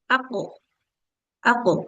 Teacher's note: kalau memantul itu dia memang mendekati fathah tapi tidak boleh sampai ke fathah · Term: qalqalahnya